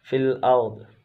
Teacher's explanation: را ساکنہ سے پہلے زبر ہے تو را کو پر پڑھیں گے